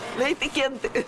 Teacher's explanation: Acaba sendo trocada pela letra I. São poucos os brasileiros que pronunciam o E, assim, bem falado, principalmente no final das palavras, como aqui na região de Curitiba.